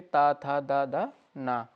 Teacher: और दंत से त, थ, द, ध न